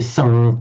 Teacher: what you've got here is just the nasal sound merging into the next one